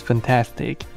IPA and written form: fænˊtæstik (fantastic)